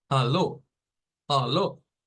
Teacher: entonces la gradita más alta que sería esta nos representaría que la primer sílaba es con una fuerza de voz grande ahí está el acento o la sílaba tónica